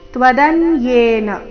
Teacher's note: ಯೇ ದೀರ್ಘ ಮುಂದಿನ ರಸ್ವ ಬರಬೇಕು